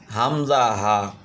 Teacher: এক নম্বর মাখরাজ হামজা হা। গলার গভীর ভাগ অংশ থেকে হামজা হা